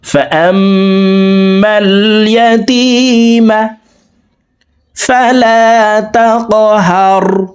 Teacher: এই জবর ওয়ালা হামজাটি তাসদীদ ওয়ালা মিমের সাথে 3 সেকেন্ড পরিমাণ গুন্না করে পড়ব